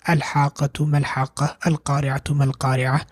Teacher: Here we pronounce the hamzatul wasl because we are starting with it.